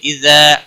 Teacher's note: الف مدہ ہے، 1 الف کے برابر کھینچ کر پڑھیں گے